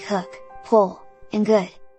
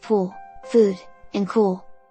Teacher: pronounce it shorter and more relaxed than the long sound of U, the vowel sound in words like pool, food, and cool. It also told me to round my lips too.